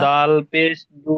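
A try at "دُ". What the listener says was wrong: না, দালের টানটা দিতে হবে। দালের যে টান আছে, অক্ষরের যে টানটা, সেই টানটা দিতে হবে। যেমন দাল পেশ দু।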